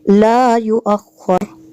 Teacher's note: لا کو کھینچنا ہے آگے، یو کو یا پیش یو کو نہیں کھینچنا